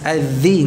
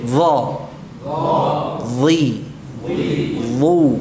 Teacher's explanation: Kalau dzal itu tipis, dha tebal.